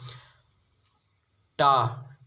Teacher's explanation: टा दोस्तों वर्ग जो होता है मूर्धन्य होता है